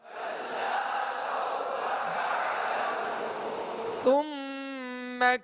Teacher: سا کو نرمی کے ساتھ پڑھیں گے، اس میں سیٹی کی آواز بالکل پیدا نہ ہو